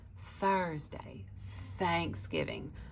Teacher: your voice turns off you don't feel the vibration of your voice box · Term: soft th sound